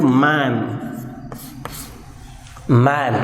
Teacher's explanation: So air stream passes through nasal cavity for the production of sound like m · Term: nasal sounds